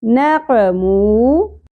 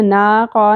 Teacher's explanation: نون اور قاف دونوں پر ایک ایک زبر ہے، زیادہ نہیں کھینچنا، نا قا نہیں پڑھنا، مو واو مدہ ایک الف کے برابر کھینچیں گے۔